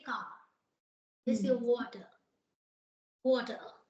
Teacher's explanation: so in New York accent they drop the sound of R